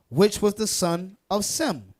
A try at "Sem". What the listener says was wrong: So in Greek, it's pronounced Shem. It's not really Sem, but it's Shem. The letter S in Greek is often pronounced with a sh sound.